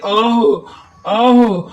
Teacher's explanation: आह, आह, हा साकिन है, ये हा की आवाज सीने के जोर से निकालनी है